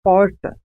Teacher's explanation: A pronúncia porta é conhecida como R retroflexo ou R caipira. Nesse caso, há um movimento de retroflexão da língua em direção ao fundo da boca.